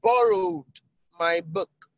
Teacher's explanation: the emphasis is on borrowed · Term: emphatic stress